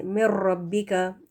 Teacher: نون ساکن کے بعد را، تو یہاں پر نون کو پورے کا پورا آپ ڈراپ کر دیں، حذف کر دیں اس کو، اور میم را زیر مر اس طرح سے مر ربی کا یہاں پر پڑھا جائے گا.